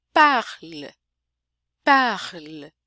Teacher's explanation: Parece que tem um E no final, mas na verdade é só o L, que é mais longo e o E mudo.